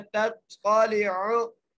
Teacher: ठीक है जी, ता को हम खींच के पढ़ेंगे क्योंकि यहाँ पर मद्दा आ गई है, याई मद्दा आ गई है, इसलिए हम ता को खींच के पढ़ेंगे अल्लती तत्क़ालिउ। ता को ता से मिलाना है, ता को मोटा करके पढ़ना है और लाम के नीचे ज़ेर है, बगैर खींचे पढ़ना है तत्क़ालिउ।